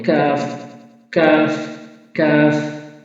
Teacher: একটু সামনে উপরের তালু জিহ্বার গোড়া থেকে একটু সামনে উপরের তালু জিহ্বার গোড়া আর উপরে সামনে তালু লাগালে কাফ হরফটি উচ্চারণ হবে